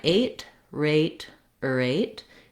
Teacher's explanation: Then the erate syllable, we have the R between a schwa and the A diphthong.